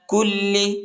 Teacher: لام کو شدت کے ساتھ سختی کے ساتھ پڑھیں گے